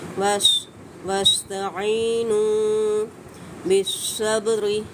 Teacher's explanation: صاد کو ہم نے پر کر کے ادا کرنا ہے، مستعلیہ حروف ہے، با پہ قلقلہ کریں گے، قلقلہ یہاں پہ صغرا ہوگا۔ بالصبر، را کو بریک ادا کرنا ہے، پود نہیں ہونے دینا۔